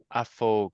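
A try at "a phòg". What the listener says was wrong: Pogue. Get that long O in there. A fogue.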